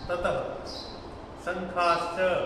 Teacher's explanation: तालव्य श म्हणजे तालू पासून बोलणारा श, शलगमवाला श